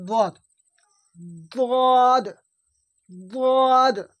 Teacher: কিনারাজীবের কিনারা এবং তার বরাবর উপরের মাড়ির দাঁতের গোড়ার সাথে লাগে উচ্চারণ হয়